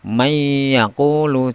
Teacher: jadi suara nunnya hilang langsung masuk kepada ya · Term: Idgham